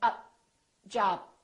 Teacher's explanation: closing your lips and saying up, job. Don't release the puff of air. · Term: final stop